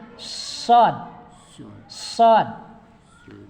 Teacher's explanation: ada sifat sopir, desis. Jadi desisnya lebih dulu sebelum pengucapan hurufnya.